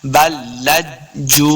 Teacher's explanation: جیم پیش واو جو، واو مد ہے، اس کو دو حرکات لمبا کر کے پڑھنا ہے